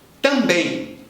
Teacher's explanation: O primeiro M vai nasalizar o A, causando um A nasal longo.